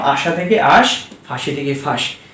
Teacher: অন্তঃস্বরলোপটা হলো শব্দের শেষে স্বরধ্বনির লোপ হবে